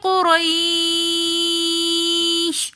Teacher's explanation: قریش میں را کے اوپر زبر ہے تو اس لیے اس را کو ہم موٹا پڑھیں گے، اور قاف بھی موٹے حروفوں میں سے ہے تو اس لیے اس کو ہم مخفمہ ادا کریں گے۔